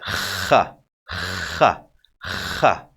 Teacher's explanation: Now, the kha, let's call it, it's the scratchy one. You feel something is scratching into your throat while saying it.